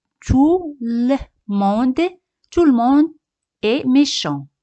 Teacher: T al final no se pronuncia